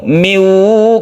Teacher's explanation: kita tasydidkan ke wawu, kita masukkan idgham artinya masuk ke huruf wawu ini dengan disertai dengung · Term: idgham bi gunnah